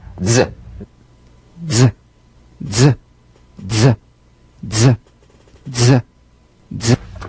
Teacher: Use a light staccato treatment without sustaining the Z. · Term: resonant staccato Z